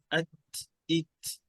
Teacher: সিনের আওয়াজ আসা যাবে না, শুধু বাতাসটা বের হবে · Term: হামস